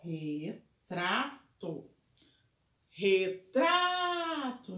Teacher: Então, a minha sílaba tônica é no tra.